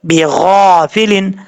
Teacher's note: غین حروف مستعلیہ میں سے ہے، پر پڑھا جائے گا